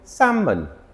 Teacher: A lot of people say salmon because it has an L in it, but the L is silent.